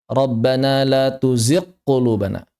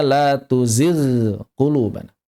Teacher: Yang pertama mencampur sama dengan qof mag ya cukup sering saya temukan. Kemudian membaca dengan idgham saat bertemu qof.